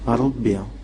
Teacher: C'est un R dit emphatique.